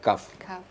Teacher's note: Kaf agak sedikit di depan. Juga di pangkal lidah tapi di depan